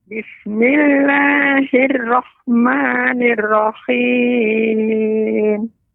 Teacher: Huruf ra nanti terus Nenek latih, yaitu pengucapannya tidak banyak getaran, takrir ya. Takrirnya tidak berlebihan.